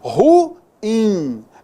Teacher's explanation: A gente fala assim, na sua pronúncia e tal, mas na realidade, a pronúncia dessa palavra corretamente é oxítona